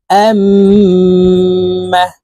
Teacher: যখন মিম এবং নুনের উপরে থাকবে তখন ওয়াজিব গুন্নাহ নাকের বাঁশি থেকে গুন্নাহ করে পড়তে হবে